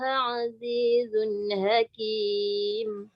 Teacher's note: Yang tu zai sama macam sin, dia ada sofir. So dia tak boleh baca azizun hakim.